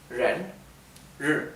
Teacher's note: la palabra persona es Ren con el tono ascendente